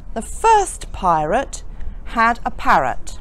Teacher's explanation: I didn't pronounce the R in first but I did pronounce the R's in all the other examples because all the others had vowels following them